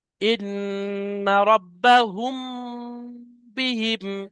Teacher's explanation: দেখেন, হা মিম পেশ হুম, মিমের উপরে এখানে সাকিন আছে, মিম সাকিনের পরে বা এসছে, ওই জন্য করে এই মিমটাকে একালিপ পরিমাণ গুণনা করে পড়তে হবে, অর্থাৎ আওয়াজকে নাকের মধ্যে ধরে রাখতে হবে। হুম, এর নাম হলো ইকফায়ে সাফাবি।